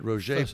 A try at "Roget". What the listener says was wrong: You left a syllable out, but that's okay.